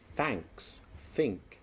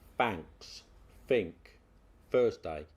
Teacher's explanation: Me hat is on me head. The unvoiced TH sound, that's when you put your tongue between your teeth and blow